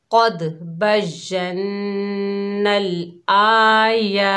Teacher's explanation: हमज़ा के ऊपर खड़ा ज़बर है, या के ऊपर खड़ा ज़बर है, दोनों को एक एक अलिफ की मिकदार खींचकर पढ़ेंगे।